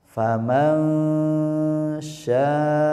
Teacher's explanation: suara nun dibaca samar mendengung atau ikhfa bertemu huruf syin